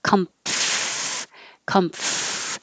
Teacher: you make the M and then release enough air to have your top teeth on your bottom lip.